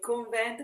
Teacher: la E accentata aperta